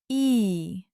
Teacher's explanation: the sound E is a bright front sound